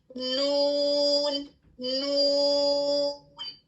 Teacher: لام میں کیا ہوتا ہے کہ آپ کی زبان تھوڑی سی ٹرن بھی ہوتی ہے اس طرح، لیکن نون میں اس کو ٹچ کرتی ہے، تھوڑا سا آپ کا جو فرنٹ کا ایریا ہے وہ کمپلیٹلی بلاک ہو جاتا ہے، ہوا وہاں سے نہیں نکلتی · حرف نون جو ہے وہ زبان کی نوک اس کے سامنے کے دانتوں کے مسوڑوں کو ٹچ کرنے سے ادا ہوتی ہے